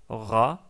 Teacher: le R tel qu'il est prononcé à Paris. Non pas comme c'est prononcé par exemple dans les régions du sud comme à Marseille, où c'est plus prononcé plutôt comme un R roulé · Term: le R parisien